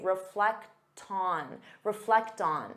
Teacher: because you have that t sound you can transfer it to the next sound and say reflecton reflect on so it sounds like one word